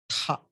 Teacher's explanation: For that ta, you add one small ha, it becomes tha.